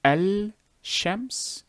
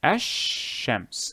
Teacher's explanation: you do not say l you remove the l from the enunciation however it is written so you will say ash shems and in these cases the